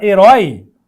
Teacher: herói é uma oxítona e termina com esse ditongo aberto